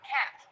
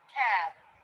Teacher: the word cat will be a little bit shorter than the word cab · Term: vowel length